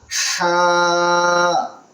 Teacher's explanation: ہا، بالکل حلق سے، گلے کے نچلے حصے سے